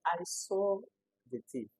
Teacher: So the emphasis of this sentence is on the seeing. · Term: emphatic stress